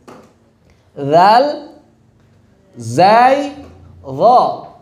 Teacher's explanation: Rokhawah, tapi jahar. Rokhawah, tapi udaranya gak boleh ngalir. Suaranya ngalir, udaranya tertahan.